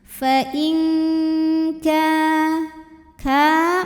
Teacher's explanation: Karena ada nun sukun menghadapi huruf kaf, maka nun sukun bunyinya samar-samar, siap-siap ke kaf disertai bunyi dengung. Dan ini kaf dengungnya lebih besar dibandingkan dengan kesamarannya ya. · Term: ikhfa ab'ad